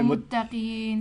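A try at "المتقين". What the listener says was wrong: yeah, the ta should be smiley. Muttaqeen.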